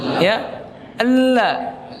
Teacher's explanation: Inhiraf yaitu berbeloknya suara. Ya, karena kita membaca al ya, maka suaranya dia berbelok ke samping